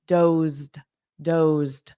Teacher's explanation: So we have a voiced z, dozed. But this ed is just a soft d.